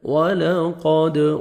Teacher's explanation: دال حروف قلقلہ میں سے ہے، ڈبل ساؤنڈ آئے گا